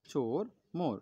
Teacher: জীবটা পেছনের দিকে উঁচু হয় আর ঠোঁটটা কি হয় তোমরা দেখো ও বলো দেখো দেখবে ঠোঁটটা তোমার গোল হয়ে থাকবে আর গোল থাকা মানে কি সেটা অল্প পরিমাণে আমাদের ঠোঁটটা খুলবে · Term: ও স্বরধ্বনিটা